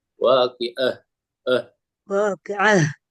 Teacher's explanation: makhrajnya ha itu keluar dari dada, sehingga kedengaran dihentakkan.